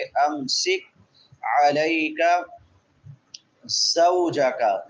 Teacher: قاف باریک ہے بغیر قلقلے کے